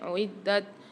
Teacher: اعدت للکافرین، دال کے اوپر مشدد آ رہی ہے، اس کو سختی اور جماؤں کے ساتھ پڑھیں گے، اور تا میں یاد رکھیے گا قلقلہ نہیں ہونا چاہیے، قلقلہ والا حرف نہیں ہے۔ اعدت، دت نہیں ہونی چاہیے، ڈبل آواز نہیں نکلنی چاہیے۔